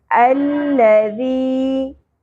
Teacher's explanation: ذال کی ادائیگی میں شدت نہیں ہوگی, سیٹی نہیں ہوگی, ٹھیک ہے, نرمی سے ادا کرنا ہے. الذی یا ساکن حرف مدہ ہے, ایک الف کے برابر کھینچیں گے.